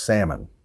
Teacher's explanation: the L is silent we don't pronounce that L so it's pronounced salmon